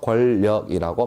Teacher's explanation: 그다음 권력. 자, 앞에 있는 니은이 뒤에 있는 리을의 영향을 받아가지고 니은이 리을로 바뀌었다. 다시 말하면 유음으로 바뀌었다. 그래서 권력이라고 발음되더라. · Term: 유음화 현상